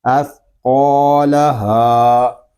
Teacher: اس قو، لام زبر لا، اس قولا، ہا الف زبر ہا، اس قولا ہا، ہا کو بھی ہم ایک الف تک کھینچ کر پڑھیں گے کیونکہ یہاں بھی الف مدہ ہو رہا ہے